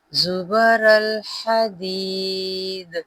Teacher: وقف مطلق دال پر ہم جزم لگائیں گے تو یہاں پہ قلقلہ ہوگا۔ حدید، ہا کو نرمی سے ادا کیجیے گا۔